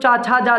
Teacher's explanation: अगर तालव्य की बात करें तो चाछा जाझा वाले वर्ग आते हैं